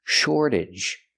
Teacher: the AGE makes you sound idge, relaxed and closed